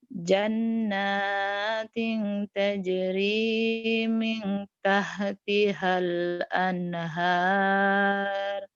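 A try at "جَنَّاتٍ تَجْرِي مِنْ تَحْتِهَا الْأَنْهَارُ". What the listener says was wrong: H kecilnya, H kecilnya kurang tuh ya. Ini H kecil artinya eha, rahmah, alhamdulillah, H gede Kamu H gedenya bisa, H kecilnya nggak bisa.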